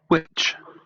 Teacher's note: Así se representaría en lugar de la H y la W, que es la representación que ponen aquí, sería con la semiconsonante labiovelar sordo